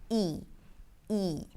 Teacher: So, the tense /i/, which is very similar to the Arabic /i/ so we don't need to really work on it, but I'm going to explain what happens. The tongue rolls forward and the lips pull to the sides a bit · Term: tense E